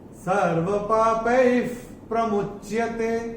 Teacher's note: चौथे चरण में प के बाद जो विसर्ग के बाद का अक्षर है प, और विसर्ग के बाद अगर प या फ आता है तो विसर्ग का उच्चारण होता है फ। जैसे फूंक मारते हैं ना, वैसा फ।